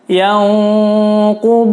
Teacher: Berikutnya yanquduna, nun sukun bertemu qaf, hukumnya adalah ikhfa, bacanya disamar. Ditahan 4 ketukan. Yanqudu menggunakan huruf dod.